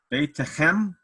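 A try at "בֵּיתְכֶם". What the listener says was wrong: Beit Chem. So it's a silent shva.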